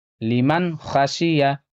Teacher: یہاں پہ نون ساکن کی آواز کو ظاہر کر کے پڑھنا ہے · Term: نون ساکن کا اظہار